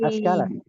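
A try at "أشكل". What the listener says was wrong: tidak Askala, pakai shin ya, sya,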